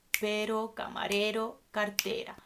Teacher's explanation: The sound is softer when there is a word and in the middle of the word there's a single R.